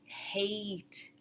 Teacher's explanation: your tongue starts out in the e position, but it ends somewhere very different · we don't have pure vowels e and o in English. They are actually minor diff thongs.